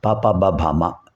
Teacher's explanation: ఓష్ఠ అంటే పెదవులు. పెదవుల కదలికలతో పెదవులు బాగా కలిసినప్పుడు ఇవి వస్తాయి. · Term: ఓష్ఠ్యములు